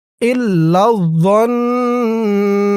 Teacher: জ দিয়ে যখন এই তাসদীদ ওয়ালা নুনকে ধরবে তখন ওয়াজিব গুন্না হবে, কারণ হরকতের পরে নুনের উপর তাসদীদ।